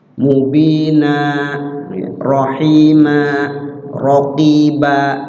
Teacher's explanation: Setiap huruf kita baca waqaf dan huruf terakhirnya bertanwin, berbaris tanwin, maksud berbaris tanwin fathatain di situ. Ya, setiap huruf pokoknya diwaqafkan di ujung kalimat hurufnya berbaris fathatain, maka dibaca jadi panjang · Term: mad iwad tanwin